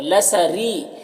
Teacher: را کے نیچے زیر ہے، را کو باریک پڑھیں گے